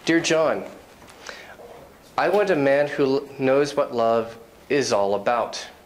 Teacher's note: My intonation goes down at the end of sentences and clauses